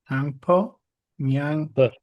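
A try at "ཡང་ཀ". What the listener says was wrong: No, not po.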